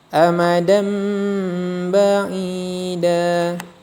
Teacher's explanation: Cara membacanya dengan merubah bunyi nun mati atau tanwin menjadi mim disertai dengan dengung. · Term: iqlab